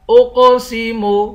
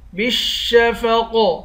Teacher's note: قاف کو موٹا پڑھیں گے، قاف پر قلقلہ بھی کریں گے۔